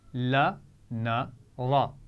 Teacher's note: زبان کی نوک دانتوں کے پیچھے مسوڑوں سے لگا کر ادا کیا جاتا ہے، یعنی دانتوں کے پیچھے جو تھوڑا سا پھولا ہوا نرم سا حصہ ہوتا ہے، لا، نا، را، وہاں سے ادا ہوتے ہیں۔